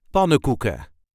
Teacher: as you can hear, I did not really pronounce the N's in the first part. So we generally just say pannenkoeken.